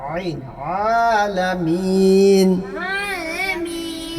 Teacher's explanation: এটা তো হামজা না, এটা তো আইন, গলা ভিতরে ডাবাইতে হবে।